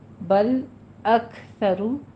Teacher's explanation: کاف پہ بھی ہمس کریں گے اور را مفخم پڑی جائے گی، را کے اوپر ہونٹ گول کیجیے